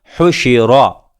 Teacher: را کے اوپر زبر ہے تو را کو پر کیا جائے گا